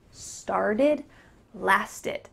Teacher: The T is changing to a D, and that final e-d ending is going to sound like id.